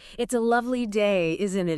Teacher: Often that isn't it part has a rising tone,